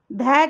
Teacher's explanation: ध कैसा वर्ण है? सघोष और महाप्राण।